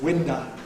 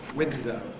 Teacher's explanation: In particular, final unstressed O tends to be replaced by schwa, which doesn't happen in standard accents, so that for standard window, you get winda. Cockney schwa is pretty open anyhow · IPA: [ ˈwɪndə ]